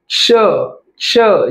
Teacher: click होत आहे का तुम्ही स्वतः चेक करा श् जिभेच्या मागे तुमचे दातांच्या मागे तुमची जीभ लागेल त्याचबरोबर मागील भाग हा टाळूला लागेल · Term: दंत तालव्य